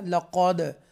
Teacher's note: یہ جو قاف ہے حروف مستعلیہ میں سے ہے، 7 بولڈ لیٹرز جو ہیں ان میں سے ہے، اور ہمیشہ یہ پور پڑھا جائے گا